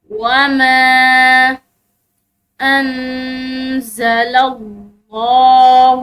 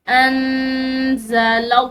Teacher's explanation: لفظ اللہ کی لام موٹی پڑی جائے گی کیونکہ اس کے پیچھے والے حرف یعنی کہ لام کی زبر ہے